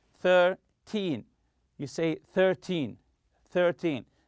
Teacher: When counting teen numbers such as 13 and 14, stress the first syllable.